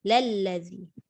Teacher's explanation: Dia tidak boleh dibaca dengan baris atas pada hamzah wasal. Dia tak boleh baca la allazi. Dia terus sambung dengan la tu, terus masuk lazi.